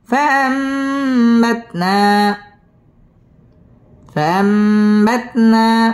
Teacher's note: এই নুনটাকে মিম দ্বারা পরিবর্তন করে গুন্নাহ করে পড়তে হবে